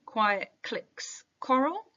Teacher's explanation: the plosive alliteration manages to sound quiet is because it's paired up with lateral continuant sounds, so the combination of the C and the L, and with the qu, the W behind the C, that's the continuant.